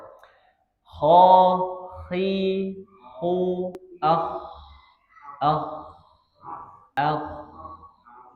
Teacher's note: Dia seperti huruf H cuman ada sedikit banget itu ada getaran. Tapi kebanyakan ketika mengucapkan huruf K itu dikencengin dengkurannya seperti itu. · huruf K itu dengkurannya enggak ada dia enggak dengkur. Dia cukup memakai sedikit getaran saja.